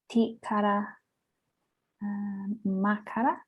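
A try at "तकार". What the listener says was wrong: Yeah, just when you say it's not tikara, takara. Remember that you always have the embedded akara, right? So it's always takara.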